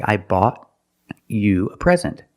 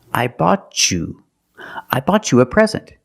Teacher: I bought you a present. Or when I have T before the Y, I can make the ch sound. I bought you.